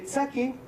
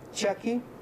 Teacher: De igual manera, en el quechua ancashino tenemos la consonante africada alveolar tsa, que contrasta con la africada palatal cha.